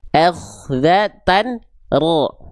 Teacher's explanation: Getarannya sedikit, ya tapi jelas, ya tegas, bukan hilang, bukan juga terlalu banyak.